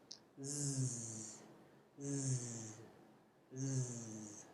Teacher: This means that you create friction through clenched teeth by directing airflow with the tip of the tongue. The Z sound is made through the mouth and is voiced, which means that you vibrate your vocal cords to make the sound. It's defined by the shape of your teeth and the position of your tongue. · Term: voiced alveolar sibilant